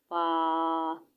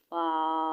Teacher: ऊपर के दांतो के किनारे और निचले होठ के तर हिस्सा से अदा होना है